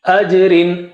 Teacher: Jim has qalqala there, okay, sukoon.